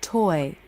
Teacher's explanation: dark because the tongue has shifted back for the second position the corners of the lips have relaxed out and the front top part of the tongue reaches up towards the roof of the mouth · lips round for the first sound and relax for the second sound as the tongue arches towards the roof of the mouth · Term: oi